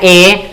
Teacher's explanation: तो आवाज हमारी सीधी भी निकलती है और आवाज हमारी हल्की तालु को भी टच करती है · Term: कंठ तालु